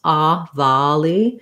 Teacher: just looking at volley, that has first syllable stress